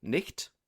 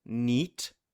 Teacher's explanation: goes from something like nicht to niet, with the consonant dropped